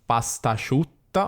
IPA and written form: pastaʃiutta (pastasciutta)